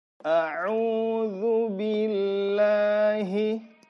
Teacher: H, dia keluar di bawah tenggorokan. Tempat keluarnya berdekatan dengan huruf alif.